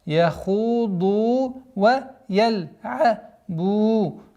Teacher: Долгота в размере 2 огласовок, дамма над буквой ба